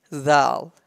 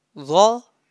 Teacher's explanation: Zal pronounced softly, slightly, and Za pronounced heavily and boldly.